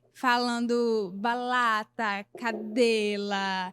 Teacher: com 6 anos, trocando o R pelo L